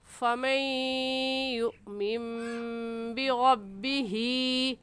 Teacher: ہم نون پڑھنے کے بجائے چھوٹی سی میم اس وجہ سے پڑھیں گے کیونکہ نون ساکن کے بعد با آ جائے، نون ساکن کے بعد با آ جائے تو وہاں پر اقلاب ہوتا ہے.